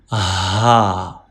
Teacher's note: And ha pronounced from lower part of throat. From here, right here.